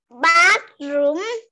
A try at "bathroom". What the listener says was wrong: Mình cố gắng mình đọc âm ở giữa cho cô nha. Âm thờ nào.